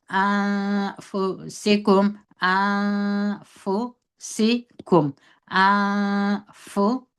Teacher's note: اوس نو دغه نون چې موږ دلته اخفا کوي دا باریکه اخفا ده